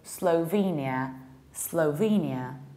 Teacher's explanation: And the American accent, a little bit more closed O